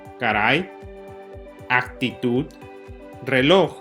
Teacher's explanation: palabras podemos inferir dos reglas de las palabras agudas primero que el énfasis es en la última sílaba dos terminando en consonante excepto las consonantes n o s dado